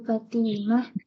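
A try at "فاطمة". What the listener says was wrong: Fatimah, fa-nya panjang.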